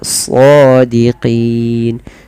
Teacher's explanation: nunnya kita matikan menjadi nun yang sukun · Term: mad arid